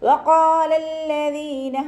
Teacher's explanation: രണ്ടക്ഷരങ്ങൾ ഉച്ചരിക്കുന്ന കനം നമ്മളവിടെ കൊടുക്കണം, പക്ഷെ മണിക്കാൻ പാടില്ല. വഖാലല്ലദീന എന്ന് മണിച്ചിട്ട് ഓതരുത്. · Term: ശബ്ദ